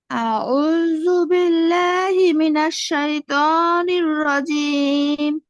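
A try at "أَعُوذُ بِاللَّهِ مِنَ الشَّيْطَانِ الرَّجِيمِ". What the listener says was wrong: আমরা কিন্তু জালটা শক্ত করে পড়ছি, জালটা নরম হবে।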